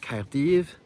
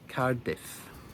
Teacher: The accent also moves from Caerdyf to Cardiff, and the v on the end becomes f. So, we get Caerdyf Cardiff.